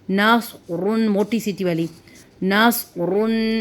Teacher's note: صاد کی آواز موٹی اور سیٹی والی ہوتی ہے